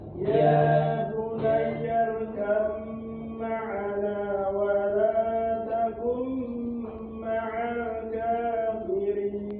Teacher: Idghamnya idgham mutajanisain ini. Maka dia didengungkan.